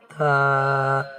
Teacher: تو جس حرف کے نام میں دو حروف ہوں ان کو دو الف کے برابر، یا کہہ لیں کھڑی حرکت کے برابر کھینچ کے یا لمبا کر کے پڑھیں گے ہم